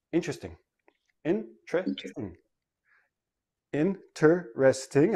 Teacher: I have four syllables. When I actually say it naturally, it becomes three syllables and the T and the R become like a CH